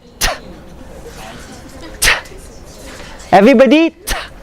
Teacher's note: Behind the teeth, the top teeth, near the alveolar ridge.